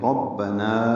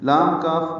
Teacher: نا الف مدہ ہے، 2 حرکات لمبا کریں گے